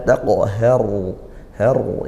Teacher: ra sukun, dibaca tafkhim tebal ya, karena didahului fathah ra sukunnya